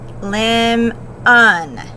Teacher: So the word lemon, the first syllable, which is stressed, doesn't have the schwa in this case, but the second unaccented one does.